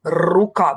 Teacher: перший звук на початку слова - це твердий приголосний р рука вимовляємо твердо позначаємо однією рисочкою ру голосний звук у позначаємо